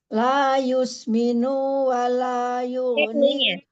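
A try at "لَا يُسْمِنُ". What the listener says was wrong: Nunya pendek. Bukan layas. La yusminu wa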